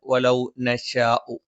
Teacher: വലൗ നശാഉ മദ് മുത്തസിലാണ്, നിർബന്ധമായും നീട്ടേണ്ടതാണ്.